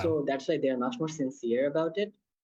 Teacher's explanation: Just notice again how he rises on sincere. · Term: rising intonation